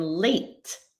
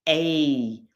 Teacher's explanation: that A sound, A, it's a transition, it's a diphthong.